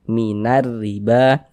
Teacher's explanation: Sehingga huruf lamnya dia tidak ada tanda bacanya karena dia dibaca idgham dari na langsung ke huruf rnya ini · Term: idgham syamsiyah